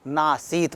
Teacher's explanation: तो न धन आसीत, न में अ है और उसके आगे आ आया, दोनों मिलकर क्या हो जाते हैं, अ और आ का योग होके आ हो गया। तो इस तरह से यहाँ पर न धन आसीत, ये नासीत बना। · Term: दीर्घ स्वर संधि